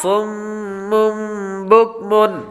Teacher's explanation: صاد، صاد حروف مستعلیہ میں سے ہے اس لیے اس کو پر پڑھیں گے.